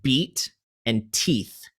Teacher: So that would be like beat and teeth, because the vowel is the same, but the consonant on the end is not from the same family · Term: assonance rhyme